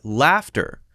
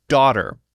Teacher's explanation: daughter and the L in laughter they're exactly the same but in laughter there's an F sound and in daughter there's no F sound